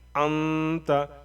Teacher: نون کی آواز کو ناک میں چھپا کر کے پڑھیں گے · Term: غنہ